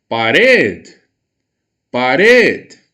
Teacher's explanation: A sílaba red, ela soa mais forte, eu emprego mais força, mais voz, mais potência para pronunciá-la. Logo, ela é a sílaba mais forte da minha palavra, ela é a sílaba tônica.